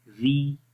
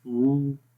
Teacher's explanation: تو ری میں آواز باریک پڑھیں گے، اوپر کی طرف نہیں جائے گی، نیچے کی طرف ہی رہے گی